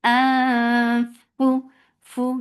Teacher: Keep your tongue straight, and you are keeping the sound in your nose for a longer time. Fu, fu, give hams in fa for the circle lips. The sound is short.